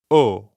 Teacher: round your lips like you're saying the English letter O, but keep them rounded the whole time. Don't relax at the end how we normally do in English. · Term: French O